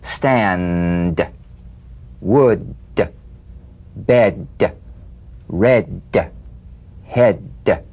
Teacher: play this D drumbeat on the springing away of the tongue from the upper gum Ridge feel a pulsation in the tongue